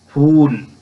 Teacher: تو معروف کی جو صورت ہے اس میں جیسا کہ نام سے ظاہر ہے، مشہور، معروف، تو جہاں واو کا پورا اظہار ہوگا، واو بھرپور استعمال ہوگی، وہاں واو معروف ہے